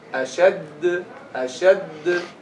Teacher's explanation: Don't pause between the two dal.